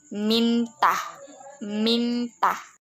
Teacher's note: ciri-ciri hidup, nasal, apikodental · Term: Bunyi N